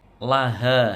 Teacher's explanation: Laha ma kasabat wa 'alaiha maktasabat. Laha, ha panjang matobi'i dua harokat panjangnya